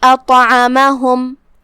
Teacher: پھر حرف طا ہے، طا پہ جزم ہے لہذا اس کا حکم ہے قلقلہ، مطلب ہم طا کو ہلاتے ہوئے یہ کلمہ کو ادا کریں گے۔ طا حروف تفخیم میں سے بھی ہے، ہم اسے موٹی آواز میں منہ پھلا کے پڑھیں گے